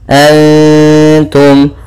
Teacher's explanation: Pada lafal antum ada bacaan ikhfa hakiki, yaitu kita samarkan suara nunnya kepada huruf ta.